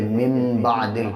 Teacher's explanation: نون ساکن کے بعد یا تنوین کے بعد جب آگے با آتا ہے تو نون کو میم سے بدل کے پڑھتے ہیں